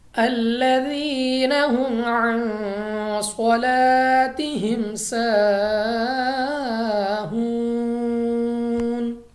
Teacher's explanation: صاد حروف اخفاء میں آنے کی وجہ سے یہاں پہ اخفاء کریں گے، یعنی ہم غنہ کر کے پڑھیں گے · یا ساکن سے پہلے زیر ہے تو یا مدہ ہوگا، یعنی یہ مدہ حروف کو ہم نے کھینچ کر پڑھنا ہوتا ہے، 2 سیکنڈ تک 2 الف تک لمبا کریں گے